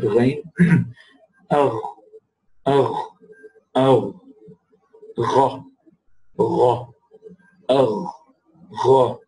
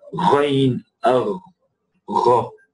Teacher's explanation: Notice a description of the makhraj of ghain. The ghain originates from the root of the tongue along with the soft palate